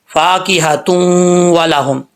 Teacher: فا کے آگے الف ہے, ایک الف کی مقدار اس کو لمبا کیا جائے گا